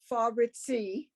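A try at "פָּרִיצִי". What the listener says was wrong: First of all, the first letter has a dot in it, which makes it the P sound. Okay, remember when you have the two dots under a letter in the middle of a word, dead stop.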